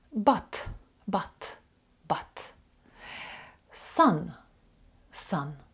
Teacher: оцей короткий звук а він стоїть між вимовою а і о але він ближче до букви а